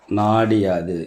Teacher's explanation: நிலைமொழி ஈற்றில் உள்ள உகரம் இகரமாக மாறும் அப்படி மாறக்கூடிய இந்த இகரம் வந்து தன்னுடைய ஒரு மாத்திரையிலிருந்து குறைந்து அரை மாத்திரையாக ஒலிக்கும்